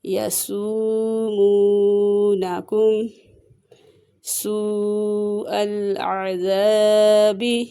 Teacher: یہاں پہ مد متصل کا قاعدہ ہو رہا ہے، اسے 2 سے 2.5 الف کے برابر کھینچ کے پڑھیں گے